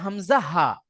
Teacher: হামজা হা উচ্চারিত হয় গলার শুরু অংশ হইতে